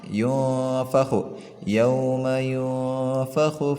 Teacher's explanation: Nun matinya pembacaannya disamarkan. Yo bunyinya itu ke ng ang gitu ya. Yo tapi harus ditahan sebanyak 1 harokat atau 2 alif. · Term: ikhfa